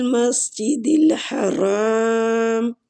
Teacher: را جو ہے یہ فتح کی وجہ سے پور پڑھیں گے